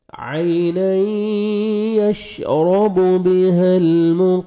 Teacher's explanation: مقر را مشدد را کو پر بھی کرنا ہے آپ نے مقر مقربون واو مد ہے 1 سیکنڈ با کو کھینچنا ہے اور نون ساکن ہو جائے گا جب سٹاپ کریں گے. عینا یشرب بها المقربون.